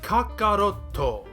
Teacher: As I explained last time, Japanese phonetics do not allow for many sounds that end in consonants. That's why you end up with these clipped, elided over vowel sounds, often O's like we see in Kakarotto